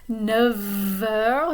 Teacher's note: Notice the pronunciation of the F at the end of neuf. 9 heures, it becomes like a V sound.